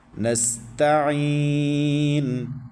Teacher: نون کے بعد سین ساکن، تو یہ سیٹی کا ساؤنڈ نکالیں گے، حروف صفیریہ میں سے ہے یا سیٹی والے حروف میں سے ہے یا سخت حروف میں سے ہے، ایک ہی چیز ہے، نام مختلف ہیں۔